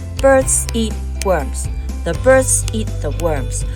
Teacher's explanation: native English speakers say all 4 sentences with the same pace and end up more or less in 3 beats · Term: native English rhythm